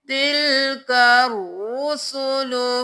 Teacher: رو پر تشدید ہے تو ہم 2 بار ادا کریں گے رو کو موٹا